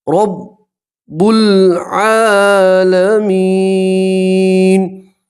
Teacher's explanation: را کے اوپر زبر ہے، را کو موٹا پڑھیں گے، پور پڑھیں گے